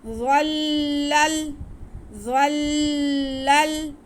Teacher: यह हरूफ़ मुस्तालिया है, तो हम इन हरूफ़ मुस्तालिया को मोटा करके पढ़ते हुए लाम के साथ मिलाएंगे, क्योंकि लाम मुशद्दद है। ज़ल्लल ज़ल्लल, पहला लाम मुशद्दद है, उसको हमने ज़ा के साथ मिला के पढ़ लिया।